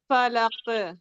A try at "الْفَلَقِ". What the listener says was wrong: نہیں ق ق تھوڑا موٹا کرتے ہوئے رکیں.